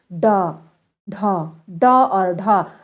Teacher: व्यंजन ध्वनियों के उच्चारण में जीभ की नोक को उलट करर ताल को झटके से छूकर फिर सीधा कर लेने से जो ध्वनि उत्पन्न होती है उसे ही हम उत्क्षिप्त व्यंजन कहते हैं